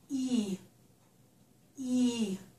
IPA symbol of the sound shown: i